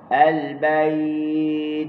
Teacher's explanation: hujung lidah kan kita tekan gusi lepas tu dia tahan suara dia kita pun lepas angin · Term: huruf ta